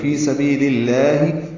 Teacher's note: لام کی زیر کی وجہ سے آگے لفظ اللہ کا لام اس میں جلالہ باریک پڑھیں گے. فی سبیل اللہ یعنی للہ نہیں پڑھیں گے, فی سبیل اللہ.